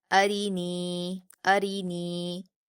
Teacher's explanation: را پر زیر ہے اس لیے را کو باریک پڑھیں گے